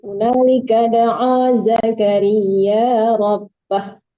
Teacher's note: kalau mau berhenti rabbah ya Bu, jangan dipanjangkan, hanya dimatikan